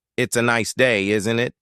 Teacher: the tone goes up at the end making it clear it's a question